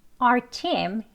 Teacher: 여기서는 our라고 our 발음을 다 하지 않고요. 그냥 r. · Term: 약한 형태